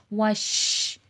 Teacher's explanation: شین میں دیکھیں آواز میں تفشی پھیلاؤ ہے